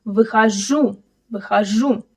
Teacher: Notice выхожу. The stress is on the last syllable.